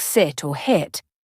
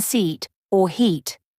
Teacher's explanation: The short I sound in words like sit or hit is very different from the long E sound in seat or heat. For the short I, your mouth should be more relaxed, while for the long E, your lips should spread a bit more, like when you're smiling.